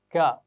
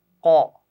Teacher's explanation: بالکل صحیح مخرج اس کا ہے زبان کی جڑ اور اوپر کا تالو، یعنی پیچھے بالکل جو زبان کا اینڈ ہوتا ہے، آخری کنارہ کہہ لیجیے اس کو، وہ اوپر سے لگائیں گے، ذرا منہ کی طرف لگائیں گے تو باریک آواز پڑی جائے گی کیا، اور ذرا پیچھے گلے کی طرف لے جائیں گے تو موٹی آواز بن جائے گی قو